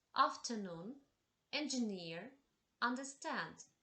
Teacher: The Words which have the stress on the third syllable